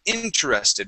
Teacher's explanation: it would be interested with the accent at the very beginning